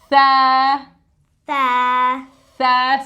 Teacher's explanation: The Tha sound comes when the tip of the tongue touches the edges of the upper 2 front teeth.